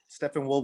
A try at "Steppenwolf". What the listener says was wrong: Steppen, not Stephen.